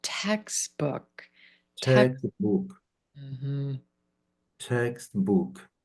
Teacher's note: Let your voice come down and make it small. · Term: compound